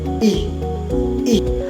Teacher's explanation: ang letrang i naman ay binibigkas sa likod na mataas